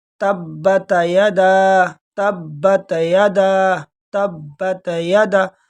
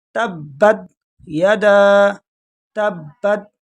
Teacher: بالکل سکون کریں گے تا پر۔ تبت یدا، یدا کے ساتھ جو الف ہے یہ مد منفصل ہے، اس کو ایک الف کے برابر کھینچیں گے۔